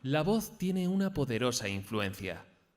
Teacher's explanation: le va a escuchar básicamente para intentar conseguir modificar esa monotonía vamos a intentar comenzar la frase en un tono agudo y acabar en grave